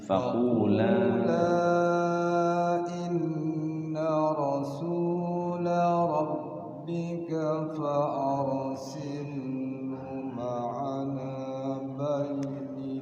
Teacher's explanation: La panjang, na panjang, la panjang tuh.